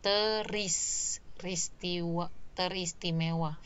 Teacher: Jadi R, fonem R di prefiks ternya itu bergeser ya, bergeser ke belakang.